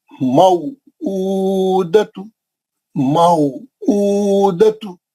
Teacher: माऊ लीन है, ऊ उल्टा पेशा 2 हरकत, दतु एक हरकत